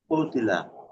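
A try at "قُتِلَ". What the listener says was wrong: উতিলা। উ বলে আবার টান দেন কেন? উতিলা।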